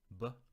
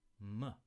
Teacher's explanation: They're both bilabial. B is a bilabial stop, B, and M is a bilabial nasal, M.